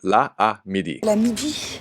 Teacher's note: Two vowels, same vowel, side by side, the technical term in linguistics is in hiatus, have a tendency to just become one vowel.